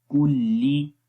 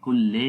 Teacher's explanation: عَلَى کلی، کاف باریک ہے اور کاف کو لام کے ساتھ ملائیں گے، کلی، لام کو لی پڑھیں گے، لے نہیں پڑھیں گے، کل لے نہیں پڑھیں گے.